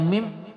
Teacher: Jadi kalau kita membaca mim ada sedikit suaranya di hidung itu, ya, khayshumnya.